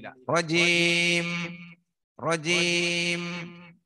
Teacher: മീമാവുമ്പോ second ഒരു മുളക്കം വേണം. മീമ ന്യൂനുള്ള പ്രത്യേകത ഒരു സെക്കൻഡ് ടൈമിൽ ലാസ്റ്റ് എന്ത് വേണം, മൂളി ഇരിക്കണം.